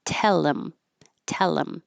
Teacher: you get rid of the H, you connect the I, and it sounds like tell 'em